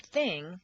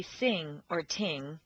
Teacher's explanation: teeth it's a quarter inch lower and forward between the teeth the unvoiced th is like an S between the teeth · teeth the unvoiced th is like an S between the teeth most people tend to replace the unvoiced th with s or T